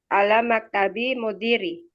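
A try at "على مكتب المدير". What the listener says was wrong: Nah, di situ kan ada alif lamnya ya. Baca alif lamnya jangan dibuang.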